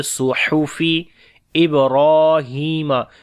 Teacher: صاد کو موٹا پڑھیں گے اور ہا کو گلے کے درمیان والے حصے سے پڑھیں گے